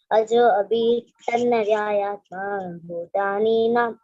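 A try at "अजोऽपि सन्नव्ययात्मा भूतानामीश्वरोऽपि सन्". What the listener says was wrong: Bhutanam Ishwaropi San. Bhutanam Ishwaropi San. Bhutan, not Bhutani. Bhutanam Ishwaropi San.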